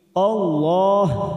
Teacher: kita baca tafim atau tebal karena sebelumnya ada harakat fathah